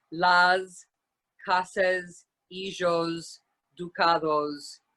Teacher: it is supposed to be pronounced is that when it's final when it's at the end of a word s is pronounced closer to a z than an s